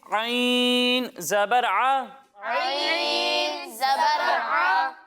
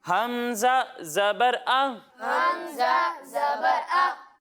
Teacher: ایک حرف ہے عین اور دوسرا حرف ہے حمزہ. جب ہم عین کی ادائیگی کریں گے تو اسے حلق کے درمیانے حصے سے پڑھیں گے, اور جب ہم حمزہ کی ادائیگی کریں گے تو اسے حلق کے نچلے حصے سے پڑھیں گے